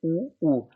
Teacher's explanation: ये जब भी आप उनका उच्चारण करेंगे ये होठों को स्पर्श करेगी, आपके उ, उ दोनों होठ आपस में स्पर्श करेंगे, इसलिए ओष्ठ्य वर्ग में आते हैं।